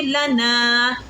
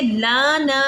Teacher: ہم نے لام کو نہیں کھینچنا، ہم نے تو نون کو کھینچنا ہے، کیونکہ نون کے بعد الف ہے نا، الف سے پہلے زبر ہے، یہ حروف مدہ بن گیا.